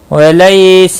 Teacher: لئی یالین ہے، تھوڑا نرمی کے ساتھ کھینچ کر ادا کریں گے